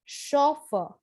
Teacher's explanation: chauffeur so the sound is shaw but the spelling is c-h-a-u so the stress is on the first syllable for the british english